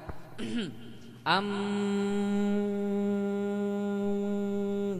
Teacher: bibir mau diapain pun enggak berubah Kenapa wajar karena mim itu makhrajnya di hidung